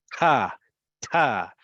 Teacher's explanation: you implode with the burst of air from your throat to make it sound even more emphatic.